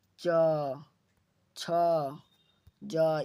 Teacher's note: च वर्ग जो होता है वो तालु यानी तालव्य वर्ण होता है